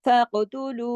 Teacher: काफ मोटा, काफ पे कलकला भी होगा। फक़तुलू, लू को खींचा इसलिए, वाव मद्दा भी है, ऊपर एक मद भी है।